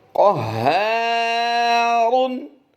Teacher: दूसरा लफ्ज़ जो देख रहे हैं, इसकी अदायगी करेंगे, कौफ और रा को पुर करेंगे